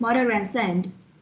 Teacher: And here are the linking schwa with R. When a word ends in a schwa sound and the following word begins with any vowel sound, most speakers will join the words with R. For example, in the word mother, the second syllable is a schwa, and in the word and, it is also a schwa, so we will link the word mother and son and pronounce it like mother and son.